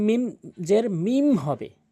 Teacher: এই বা হরফটি যদি কখনো নুন সাকিন এবং তানভিনের পরে দেখেন, সেই প্রথম যে নিয়ম গিয়েছে ইজহার হাকিকি এবং ইকফা হাকিকি, সেরকমই এই ইকলাবের হরফ একটি বা যদি নুন সাকিন এবং তানভিনের পরে দেখেন, তাহলে আপনি নুন সাকিন এবং তানভিনকে ছোট্ট একটি মিম দ্বারা পরিবর্তন করে আপনি মিম উচ্চারণ করে গুন্না করে পড়বেন